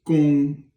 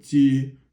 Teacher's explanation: This is gong, and then ji, it means to attack, both first tone